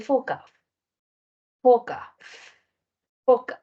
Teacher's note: los articuladores se aproximan, pero no se pegan. Y el aire pasa por en medio provocando una fricción · Es fricativo porque el aire sale por en medio de los articuladores. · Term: sonidos fricativos